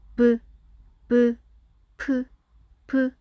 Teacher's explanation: 그래서 미음에서 만들어진 비읍과 피읍도 부, 푸, 푸 입술이 서로 맞다. 같은 입 모양이야.